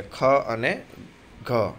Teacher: ज्यारे वधारे हवा निकळती होय तेवा आवशे ख अने घ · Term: મહાપ્રાણ